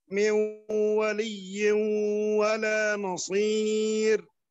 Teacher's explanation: نعطي نفس أطول على الإدغام بمقدار حركتين · gunahnya terlalu pendek silakan diperpanjang gunahnya